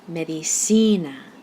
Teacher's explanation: the spoken stress falls on the second to last syllable